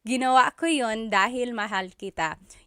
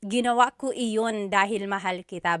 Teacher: You might hear me saying yun, as if there's no I, and that's commonly how it's pronounced. You might hear people say, ginawa ko iyon dahil mahal kita, but usually the letter I sound is dropped.